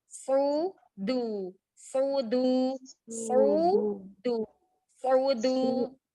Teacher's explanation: huruf istifal yang dal ini tidak boleh terbawa tebal karena sebelumnya ada huruf sod. Nanti bisa berubah jadi dot. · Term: tipis du